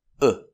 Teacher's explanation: it's not o from your lips ooh but uh